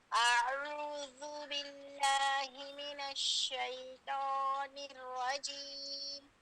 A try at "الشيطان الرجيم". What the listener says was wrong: شيطاني شيطان هركرة شيطاني حرف الثاني طاء. شيطان طاء هركرة. دیکھیے آپ کا حرف کس حرف کی طرف جا رہا ہے؟ حرف تا. نرم، ہم نے نرم نہیں پڑھنا، ہم نے بارہ کرنا ہے. شيطان